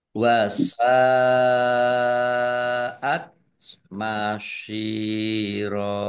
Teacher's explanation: Sin fathah alif mat tobi'i. Tetapi karena bertemu dengan huruf hamzah dalam satu kata, maka menjadi mat wajib muttasil. Dibaca panjang harus 5 harokat. Nah, kemudian masyiro shot kasroh ya sukun mat tobi'i panjang 2 harokat fathah tanwin alif karena wakof dibaca fathah panjang 2 harokat namanya mat iwat.